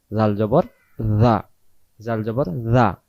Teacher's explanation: জাল অক্ষর জিহ্বার আগা থেকে নরম করে পড়তে হয়